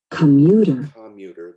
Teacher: Now we're looking for the unstressed, or the schwa sound, and that's that first syllable.